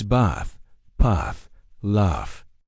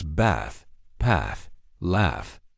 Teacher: most American accents use a short flat a sound, the same one you hear in the word cat. · Think of the sound you make when the doctor asks you to open your mouth and say, "Ah." So, it's bath, path, laugh. It's a very relaxed back of the mouth sound. · In Southern British English, we use a long, open sound. Think of the sound you make when the doctor asks you to open your mouth and say, ah. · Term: long open ah sound